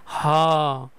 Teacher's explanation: কন্ঠেরও আরো ভিতর থেকে বাতাস বের হয়ে আসবে হ অনেক বাতাস বের হয়ে আসবে হ কন্ঠনালীয় থেকে এগুলো আসে। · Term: কণ্ঠ নালীয়